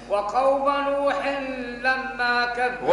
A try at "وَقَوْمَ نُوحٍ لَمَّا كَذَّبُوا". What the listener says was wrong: غن الميم الميم المشدة، وقوم نوح لما، غن لما،